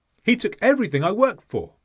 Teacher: The D was so weak we couldn't hear it. And that's what you need to do when you're attempting to speak fluently in English, where you have a consonant at the end of one word and the same consonant at the start of the next word.